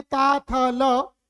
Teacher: ये सभी दंत वर्णों में आते हैं